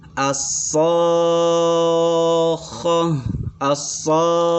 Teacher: alif lam asy-syamsiyah, yang mana ketika dibaca itu melebur langsung ke sya, langsung ke so ya.